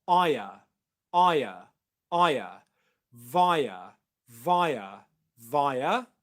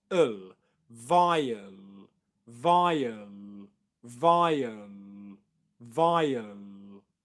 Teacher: you probably will hear it being pronounced as a triphthong. So what you've got after I is a schwa, so you get aya, aya, aya, via, via, via, and then an L sound after that on the same syllable as the schwa, so you'd get ul, vial, vial, vial, vial.